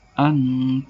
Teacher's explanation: Cara membacanya samar-samar di bibir membentuk huruf ta. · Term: ikhfa hakiki